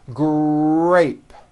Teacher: And notice in the word grape, the R sound is stronger and you even hear it more than the G sound. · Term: R blends